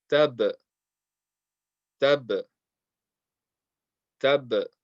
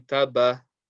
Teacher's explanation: after the sound of the ba, there's a slight echo. Basically, our lips meet to make the sound of the ba, and then they just part again to make the echo. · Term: qalqala